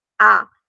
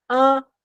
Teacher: nasal é que passa pelas vias nasais que passa pelo meu nariz